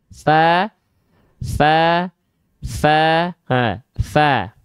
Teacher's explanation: Huruf fa-nya itu akan mengalir nafas. Ya, karena huruf fa itu punya sifat namanya adalah hams. Hams itu artinya adalah mengalirkan hembusan angin atau nafas. Nah, kalau teman-teman tepat melafalkan fa-nya seperti ini, dia pasti otomatis akan mengalirkan nafas. · Jadi ujung gigi sari atasnya dia menyentuh ke bibir bawah bagian dalam.